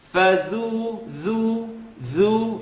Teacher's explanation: Dhal is never heavy. So, فَذُو, فَذُو. It's a tip of the tongue, edge of the top teeth.